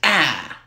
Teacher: And a low front vowel is ah.